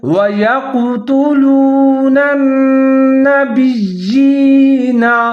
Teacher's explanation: یا کے نیچے جو کھڑی زیر ہے اس کی وجہ سے یا کو تھوڑا سا لمبا کر کے پڑھیں گے